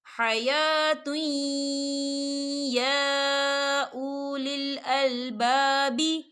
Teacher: دیکھیں حَيَاةٌ، تا کے پر تنوین ہے اور تنوین کے بعد یا آ رہا ہے، اور یا جو ہے حروف یرملون کا ورڈ ہے، تو یہاں پر ادغام ہوگا اور ہم اسے تھوڑا سا غنے کے ساتھ پڑھیں گے. اور یہاں پہ کھڑی حرکات بھی ہے اور جس پر مد بھی ہے، تو ہم اسے 4 حرکت کے برابر کھینچیں گے بھی.